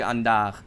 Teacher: the specific Rio dialect that actually uses the H sound